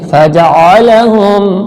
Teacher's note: आइन जो हलक के दरमियान से निकालिएगा